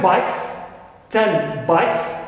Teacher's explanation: I have the sound na in 10 influenced by neighboring sound, the first one in the next word, which is B in bikes. But here the na doesn't change to be identical, right, to the sound ba, but it turns to be ma, right, which shares some features with ba, right. · The na turns into bilabial ma, clear, and not into ba. That's why it is partial, clear. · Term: partial assimilation